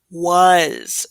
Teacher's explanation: that A is going to make kind of like a U sound